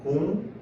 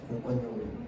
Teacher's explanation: 리을의 비음화가 일어나서 니은이 됩니다